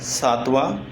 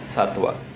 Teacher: यह अनुनासिक उच्चारण होता है हिंदी में तो होगा सातवां और मराठी में अनुनासिक उच्चारण नहीं होगा